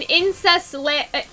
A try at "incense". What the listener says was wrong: You keep on saying incest lamp. Incense.